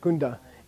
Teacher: it has an open vowel sound it has a big fat o in front of it and then the N has room to move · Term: prenasal